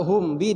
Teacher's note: Kalau hum bi dia izhar. Hum bi jelas mim matinya kedengaran, ba-nya kedengaran.